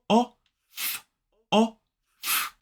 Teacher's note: So this word is off. So we use that unvoiced f sound